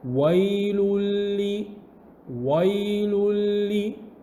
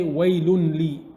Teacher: you mix the noon sound from the tanween into the lam straight away without any ghunna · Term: idgham